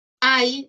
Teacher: Hay diptongo, no importa que esté con Y porque suena como una I. Diptongo decreciente.